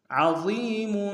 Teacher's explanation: عذاب عظیم، عین کو گہرائی سے ادا کریں گے، ضا کو موٹا ادا کرتے ہوئے یا کے ساتھ ملانا ہے، یا مدہ ایک انداز میں کھینچیں گے، میم کے اوپر تنوین ہے، غنہ کریں گے. · با کے اوپر تنوین ہے، تھوڑا سا غنہ ہوگا